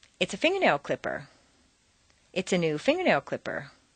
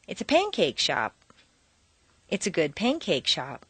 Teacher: when you continue to modify a set phrase you maintain the original intonation pattern and simply add an unstressed modifier